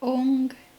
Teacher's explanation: when you close your mouth, it sounds like Om. But really, what they're doing is they're making the NG sound, so it's Om.